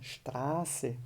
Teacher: O A, nesse caso, é um A bem longo